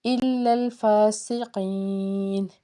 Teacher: آگے سٹاپ ہے تو 3 سے 5 الف کے برابر اس کو کھینچ کے پڑھتے ہیں